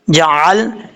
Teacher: ایک تو جیم کے بعد جو عین ہے، اس عین کو اپنے مخرج سے ادا کرنا ہے، جعل نہیں پڑھنا، حمزہ کی آواز نہیں آنی چاہیے، عین کی آواز آنی چاہیے